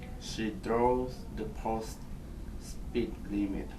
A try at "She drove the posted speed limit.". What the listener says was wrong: Okay, let's work a little bit on getting the ed sound. She drove the posted speed limit.